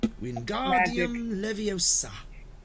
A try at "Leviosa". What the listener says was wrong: Leviosa. Not Levioso. Leviosa.